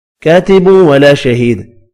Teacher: دال ساکن پڑھا جائے گا وف کی صورت میں اور قلقلہ بھی کریں گے